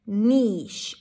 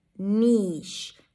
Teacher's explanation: an n sound high e and sh